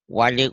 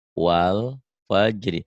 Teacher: Kita mengucapkan wal seperti diputus, seperti ada jeda.